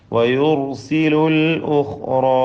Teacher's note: ഖാഇനും നിസ്ബിയായ തഫ്ഖീം. പിന്നെ റായിനും അലിഫിനും പൂർണ്ണമായ തഫ്ഖീം കൊടുക്കുക